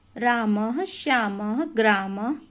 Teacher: जो अह का उच्चारण स्थान है वो क्या है? कंठ है। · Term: विसर्ग